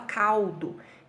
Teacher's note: esse som do L, ele é um som de U, tá? Ele é um som de uma semivogal.